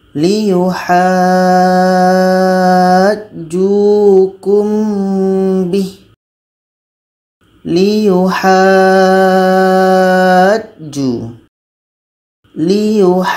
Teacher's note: kita panjangkan dulu 6 harkat baru kita sambung dengan huruf yang ada tasydid. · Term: mad lazim kilmi mutsaqqal